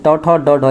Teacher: ये वाले जो है टवर्ग ये इसका उच्चारण मूर्धा से हो जाता है